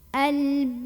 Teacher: Maka kita nggak usah tahan, ini bukan idgham bigunnah. Cara membunyikannya cukup pakai nabar. Jadi kita agak hentak sedikit, naikkan intonasinya.